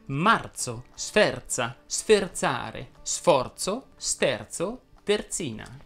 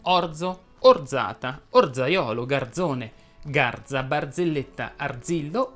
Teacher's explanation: la z andrebbe pronunciata sorda aspra quando è preceduta dalla consonante r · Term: z sorde